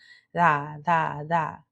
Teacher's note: Think of it like that. And it's not such a hard D sound. It's a very light D sound